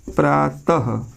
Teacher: विसर्ग जब बोलते हैं तो ह का उच्चारण होता है, ह का। ठीक है, ह का उच्चारण होता है।